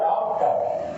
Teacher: आ और ओ दोनों के मध्य की ध्वनि होती है और इसे विदेश से लिया गया है तो अ विदेशी स्वर है। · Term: आगत स्वर